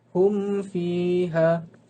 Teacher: Mim mati bertemu dengan fa, iaitu hukum tajwidnya ialah izhar syafawi, dibaca dengan jelas.